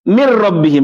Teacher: Seakan-akan tidak pernah ada nun di situ. Langsung dibaca min rabbihim. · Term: idgham total